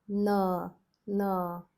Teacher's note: dental N, or tip of the tongue is right above the teeth or on the teeth